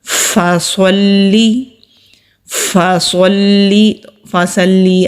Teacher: پیچھے سے زبان اوپر کو اٹھے گی اور منہ بھر کر صاد ادا ہوگا، تو پھر سین کی طرح نہیں پڑھا جائے گا۔